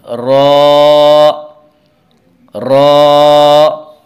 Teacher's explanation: اور را کا مخرج زبان کا کنارہ اور کچھ زبان کی پشت جب کہ ملے ثناء علیہ اور ربائی کے مسوڑوں سے، یعنی زبان کا جو کنارہ ہے اور کچھ زبان کی پشت، یہ جب ثناء علیہ اور ربائی کے مسوڑوں سے ملتے ہیں تو را ادا ہوتا ہے، را۔ تو آئیے ایک بار پھر پڑھ لیتے ہیں۔